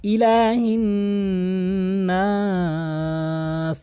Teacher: অর্থাৎ মিমে বা নুনে যদি কখন আপনি তাসদীদ দেখেন, তাহলে আপনাকে ওয়াজিব গুন্না করতে হবে। ওয়াজিব গুন্না মানে নাকের ভিতরে নিয়ে গুনগুন আওয়াজ করা, 2 আলিফ বা 3 আলিফ পরিমাণ। ইলাহিন নাস, এবং নাস কিন্তু অবশ্যই আপনি এখানে 3 আলিফ টেনে পড়বেন।